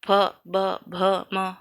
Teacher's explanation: वर्ण जिसको बोलते समय हमारे ओठों में बल पड़ता है या ओठ स्पर्श होते हैं। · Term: ओठ वर्ण